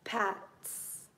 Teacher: so you don't really hear the T in there Pat's it's kind of like a a TS a TS sound